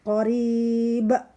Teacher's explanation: Qorib dua harokat roknya, namun memantul karena ada ba. Ba adalah salah satu huruf dari huruf qalqalah, jadi harus memantul.